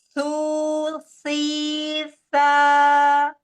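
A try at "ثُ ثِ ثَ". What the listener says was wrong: Jangan digigit lidahnya. Taruh aja di atas ujung lidah. Taruh di ujung gigi seri atas. Keluarin sedikit aja. Tu. Ti. Ta.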